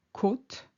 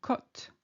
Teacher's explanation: the circumflex affects pronunciation, typically making the vowel sound slightly longer and more closed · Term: more closed O sound